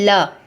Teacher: यही एक ऐसी ध्वनि है जो आपके जीभ के दोनों पार्श्वों के बगल से निकलती। जैसे ल का आप उच्चारण करेंगे तो आपको इसका समझ में आ जाएगा कि ये कहाँ से उच्चारित हो रही है।